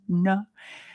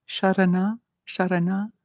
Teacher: The tongue is curling back and touching the palate, the top palate. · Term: retroflexive na